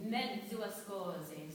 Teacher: in mezzo, it's a DZ. And it's a double DZ